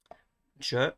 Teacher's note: it starts with a plosive de, and it ends with a fricative je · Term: affricate